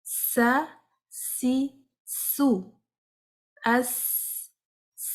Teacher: تو سین میں کوشش کریں کہ سٹی کی آواز آئے